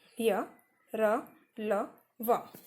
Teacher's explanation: आप भी इसका उच्चारण करके देखिए तो इसमें जो मुख से जो हवा निकल रही है वो बिना किसी रुकावट के बहुत ही आसानी से उसका उच्चारण किया जा सकता है। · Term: अंतस्थ व्यंजन